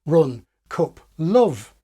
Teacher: English Northerners are famous for pronouncing strut words like run, cup and love with the same vowel as foot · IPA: rʊn kʊp lʊv